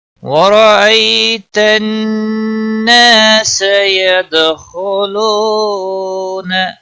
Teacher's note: ید دال پر قلقلہ ہوگا، خا کو موٹا پڑھیں گے